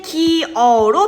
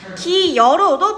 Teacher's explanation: 반모음 첨가는 모음으로 끝나는 용언의 어간, 이외 위로 끝나는 용언의 어간 뒤에 어나 오로 시작하는 어미가 올 때 반모음 이 소리가 덧나는 현상을 반모음 첨가라고 한다